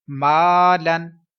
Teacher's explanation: کانا، ادھر الف سے پہلے پھر باریک حرف ہے اور الف مدہ بھی ہے، الف باریک بھی پڑھیں گے اور 1 سیکنڈ لمبا بھی کریں گے